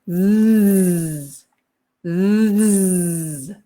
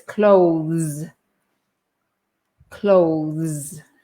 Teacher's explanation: the final sound is z. And then we have this th before it. So it's z, z.